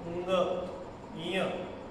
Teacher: ठीक आहे, पण अंग इय हे कळतच नाही आपल्याच्याने उच्चारणच, कारण की अर्धा नाकातून येतोय, अर्धा उच्चार नाकातून येतोय, अर्धा तोंडातून येतोय. तर नाक आणि तोंडाचं उच्चारण मिक्स होऊन उंग इय असं उच्चारण.